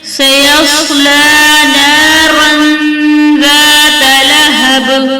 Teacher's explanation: صاد حرف مستعلیٰ میں سے ہے، اسے پر پڑھیں گے اور دو زبر کی تنوین کے بعد حرف اخفا میں سے زال ہے، تو یہاں پر اخفا کا قاعدہ ہوگا، دو زبر کی تنوین کی آواز کو چھپا کر پڑھیں گے، جیسے نارا ذات لہب۔